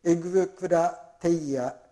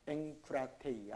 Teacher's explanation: エグクラテイヤと言って発音しにくいでしょ。だから鼻にかかってエンクラテイヤと